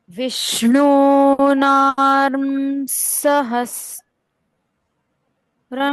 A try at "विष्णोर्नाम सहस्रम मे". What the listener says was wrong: नाम नाम, म का उच्चारण पूर्ण। विष्णोर, ना के ऊपर जो रेफ है उसका उच्चारण है आधा र, वो रेफ का उच्चारण। तो हमने किया विष्णोर नाम सहस्रम में।